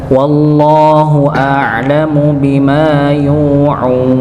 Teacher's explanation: lafzul jalalah sebelum lafaz Allah dia fathah maka dibaca tebal. Tapi jangan sampai huruf ee lafaz Allah ini tebal menjadikan huruf sebelumnya dengan tebal.